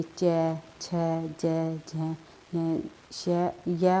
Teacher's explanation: जो हमारी जीवा होती है उसके आगे वाला भाग कठोर तालु का स्पर्श करता है, उन्हें तालव्य व्यंजन कहते हैं। जैसे कि च, छ, ज, झ, श, य और श भी जो है तालव्य व्यंजन के अंतर्गत आती है।